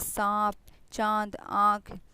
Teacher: इसका उच्चारण जब करते हैं तो नाक से भी निकलेगा और मुंह से भी निकलेगा